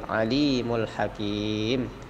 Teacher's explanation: A itu pendek, li panjang, mad tabi'i, alimul hakim. Yang hakimnya lebih panjang sedikit, 4 harokat. Hakim karena dia mad arid lis sukun.